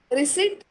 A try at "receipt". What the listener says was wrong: Or say, yeah, receipt. So you don't have to pronounce the P.